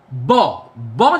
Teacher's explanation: দুটো ঠোঁট, the upper lip and the lower lip, joint হয়ে আছে, একসঙ্গে আটকে আছে। ফলে যে লাং এয়ারটা আমার ভোকাল কর্ডসের মধ্যে দিয়ে পেরিয়ে ওরাল ক্যাভিটির মধ্যে জমা হয়েছে, সেই লাং এয়ারটা কিন্তু বাইরে বেরোচ্ছে না। · ব সাউন্ডটা প্রডিউস করার ক্ষেত্রে যে টেকনিকটা ফলোড হচ্ছে সেটা হচ্ছে sudden complete oral closure and sudden release